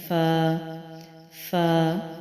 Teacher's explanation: اوپر کے سامنے کے 2 دانت نچلے ہونٹوں کے گیلے حصے پر لگیں گے تو پھر نکلتا ہے فا فا۔